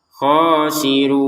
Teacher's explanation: Untuk khasirun di sini kita panjangkan enam harakat.